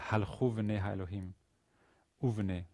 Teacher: the u from halachu is sort of read together to form almost one word